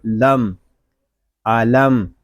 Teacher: میم ساکن ہے، یہاں اظہار شفوی ہوگا، میم ساکن کو سکون کے ساتھ ادا کریں گے۔ اس کو لم اس طرح نہیں پڑھیں گے، اس کو پڑھیں گے لم، علم۔